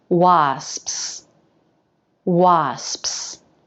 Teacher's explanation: you're already in position for that s try that with me it's just one long s while we close the lips throughout making an sps sound